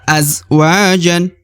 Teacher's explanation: Ja dibaca 1 harokat ya, meskipun ada alif di depan, tapi harokat an ya, harokat double, maka dibaca azwajan.